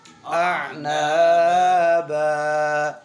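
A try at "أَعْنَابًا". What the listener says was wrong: اتنا زیادہ نہیں جھٹکے ہوتے۔ اعنابا.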